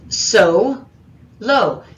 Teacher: is so low there are actually two open syllables aren't they each of the o's is going to be long because there's nothing following them in that syllable